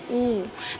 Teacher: तो जो वृत्ताकार स्वर है अब आपको वृत्ताकार से ही पता चल रहा है कि जब हम बोलेंगे ठीक है तो हमारे होठ जो हैं एक सर्कल के जैसे बन जाएंगे